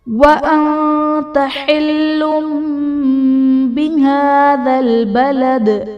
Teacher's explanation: وَأَنْتَ حِلٌّ بِهَذَا الْبَلَدِ، وَأَنْتَ میں نون ساکن کے بعد حروف اخفاء میں سے تا ہے تو یہاں پر اخفاء کا غنہ کریں گے۔ حلم میں لام پر دو پیش کی تنوین، تنوین کے بعد حرف با ہے تو یہاں پر تنوین کو ہم میم سے بدل کر اخفاء کریں گے یعنی غنہ کر کے پڑھیں گے تو یہاں پر اقلاب کا قاعدہ ہوگا۔